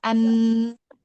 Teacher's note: an ketika kita menutup hidung kita, an suaranya tidak ada gitu karena memang berasal dari rongga hidung. Sifat bacaannya suaranya jelas sedang tipis hurufnya lalu mulutnya terbuka ketika mengucap huruf nun ringan dan dengung atau udaranya masuk ke hidung juga.